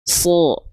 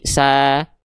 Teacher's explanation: Huruf-huruf yang tebal itu ketika dia berharokat baris atas akan terdengar seperti vokal O, dia tidak akan terdengar seperti vokal A. Kalau vokal A jadinya huruf sin nanti. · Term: huruf tebal